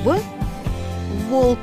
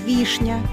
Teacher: согласная буква в обозначает твердый согласный звук в волк и мягкий согласный звук вишня